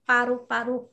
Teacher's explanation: đọc bật hơi không phải là pha